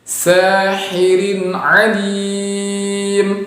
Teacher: Sahirin, yaitu kasratain bertemu dengan ain maka juga dibaca dengan jelas.